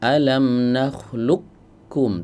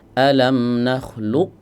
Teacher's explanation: Tidak ada sisa suara huruf qofnya sama sekali. Itu disebut dengan idgam kamil.